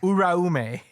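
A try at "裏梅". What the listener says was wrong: No, like roll the R.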